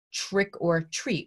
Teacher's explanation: We affricate that first sound. So it sounds more like a ch. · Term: affrication